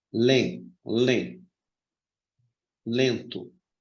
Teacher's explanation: ele tem som do E com tio, um E nasalizado